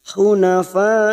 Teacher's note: Dan kita memilih untuk waqaf pada kata hunafa, maka kita tetap memanjangkan 5 harokat karena di sini hukumnya mad wajib mutasil, bertemunya mad dengan hamzah dalam satu kalimat